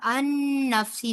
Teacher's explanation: نون کا نون کے ساتھ ادغام بالغنہ ہوگا